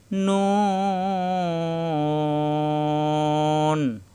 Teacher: ঠোঁট গোল হবে, জিহ্বার আগা তার বরাবর উপরে তালুতে লাগবে,